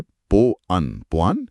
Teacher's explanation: पो बोलते समय होंठ पूरी तरह गोल होते हैं और अन बोलते समय वे सामान्य स्थिति में आते हैं। जब पो और अन को बिना रुके एक साथ बोला जाए, पो अन पोआन, तो होठों के गोल होने और खुलने के बीच जो हवा का घर्षण होता है वो स्वतः ही अव की ध्वनि बनाता है। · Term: वायु गतिकी